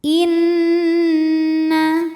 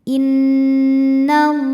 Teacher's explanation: Ada hukum gunnah musyaddadah karena nun bertasydid. Cara bacanya dengung, bunyi n tahan sampai ada suara masuk hidung.